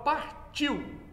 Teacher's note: Na palavra partiu, tá vendo? Então tá o ditongo IU, em que o I é vogal, ele é mais forte. E o U é semivogal. Então esse ditongo é decrescente.